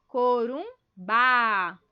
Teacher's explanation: Viram que aqui o Bá é o mais forte, certo?